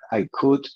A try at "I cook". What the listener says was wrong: Cuidado, estás pronunciando cortar con T al final. Cocinar tiene K al final. Cook.